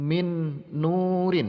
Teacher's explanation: jadi harus dibaca masuk dan mendengung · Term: Idgham Bighunnah